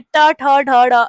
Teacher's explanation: मूर्धा मतलब जो आपकी जीभ है ना वो थोड़ी उल्टी हो जाएगी। थोड़ा यू शेप अंदर की साइड थोड़ा ट्विस्ट होती है। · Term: मूर्धन्य